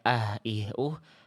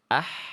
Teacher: Kalau H kecil itu karakter nafasnya lebih berbisik, Teman-teman. Dia dilafalkan makhrajnya dari tengah tenggorokan.